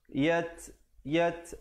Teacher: Yat ada hamas pada huruf ta, ada angin di situ.